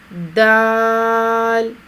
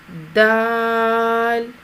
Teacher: زبان کی نوک کو سامنے والے اوپر کے 2 دانتوں کی جڑ سے لگا کر باریک آواز میں ادا کریں گے، اور اس کی ادائیگی میں 2 گنا کھینچ کر ادا کیا جائے گا.